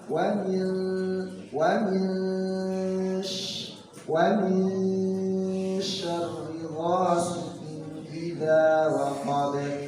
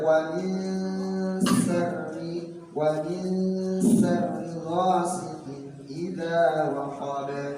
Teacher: Jadi tetap mengkondisikan bahwa huruf sya itu ya lebih udaranya itu lebih banyak ketimbang huruf sin.